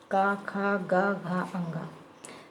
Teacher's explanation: का से माँ तक के सभी व्यंजन स्पर्श व्यंजन हैं। जैसे का वर्ग को आप कंठ से बोलते हैं